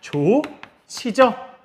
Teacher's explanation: 히읗과 지읒이 만나면 치읒이 됩니다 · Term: 거센 소리